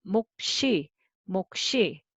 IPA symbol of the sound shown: 목시